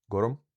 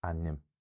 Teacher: the exact sound of this small unstressed vowel depends on whether the consonants are broad as in gorum, so you get a schwa there, gorum, or slender, so you get an i there in ainm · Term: epenthesis